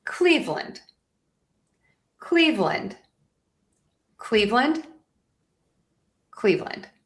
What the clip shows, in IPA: ˈkliːvlənd braʊnz